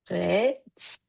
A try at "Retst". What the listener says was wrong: Yeah, excellent.